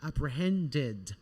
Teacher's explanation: quando o verbo terminar na sua forma base com o som de T ou de D, nós vamos pronunciá-lo como se fosse um ed.